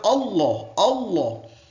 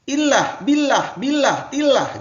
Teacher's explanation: Tafhim ini artinya adalah tebal, kandel. Ya, jadi bacanya Allah, Allah. Ada lawannya itu adalah tartik, ya, tipis.